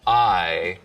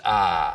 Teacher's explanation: smooth it out so it's just one sound, ah. Just like we have price smoothing in much of the South, so that I smooths out to just ah.